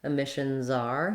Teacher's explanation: You can hear how my Z really is strong if I have to link to the next word.